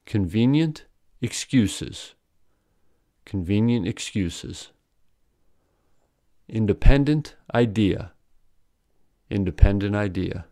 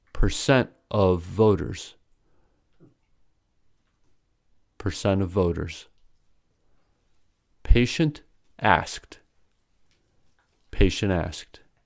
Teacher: NT, ND ending in word boundary. When a word ending in NT links into a word beginning with a vowel sound, the final ta is often deleted.